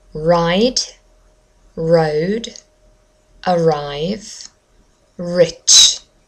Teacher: British English does not roll the r.